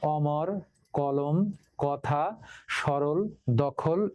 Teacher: অধ্বনির উচ্চারণ অ এর মতো হলে তাকে অ এর বিবৃত বা স্বাভাবিক উচ্চারণ বলে। এতে চোয়াল বেশি ফাঁকা হয়, ঠোঁট তেমন বাঁকা বা গোল হয় না